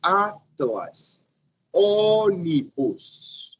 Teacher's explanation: Primeira sílaba tônica e o resto átona.